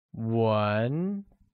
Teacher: Language translates as 文 and is pronounced with a mid-rising tone